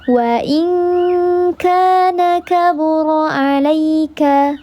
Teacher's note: alif sebelumnya harakatnya fathah dibaca panjang dua harakat namanya mad thbi'i zahir karena nampak alifnya